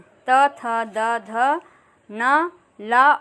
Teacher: ये दंत ध्वनियाँ हैं